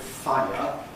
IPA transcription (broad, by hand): ˈfaɪə